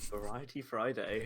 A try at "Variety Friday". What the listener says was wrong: No. Variety. Variety Friday with a V, not an F. Friday.